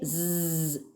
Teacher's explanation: when you say Z the Air Stream is released out only through the mouth so it is obviously an oral sound